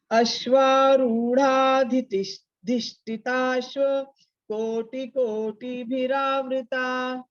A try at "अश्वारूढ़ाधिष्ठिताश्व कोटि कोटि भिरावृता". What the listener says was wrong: Wonderful, I am वेरी happy.